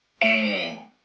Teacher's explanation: Open your mouth wide and lower your tongue to pronounce it. Imagine opening your mouth a bit more vertically than when you say the Japanese e.